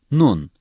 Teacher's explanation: nun dil ucunun üst ön dişlerin etlerine dokunmasıyla çöker açık ve yumuşak bir şekilde okunur